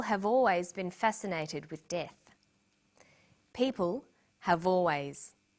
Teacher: in conversation we link the final consonant sound v with the initial vowel sound or.